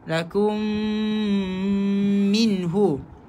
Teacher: lakum mim bertemu dengan mim idgham syafawi